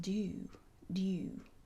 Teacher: Only the Southern speakers who make a distinction today use a diphthong in such words.